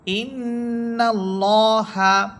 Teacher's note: লাম এই লামের পূর্বে অর্থাৎ নুন হরফের উপরে আছে জবর। এজন্য আল্লাহ শব্দের লামটি পুর বা মোটা করে পড়া হচ্ছে